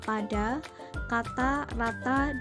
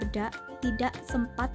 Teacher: fonem A yang berada dalam suku kata terbuka, kedengarannya lebih nyaring bila dibandingkan dengan fonem A yang terdapat dalam suku kata tertutup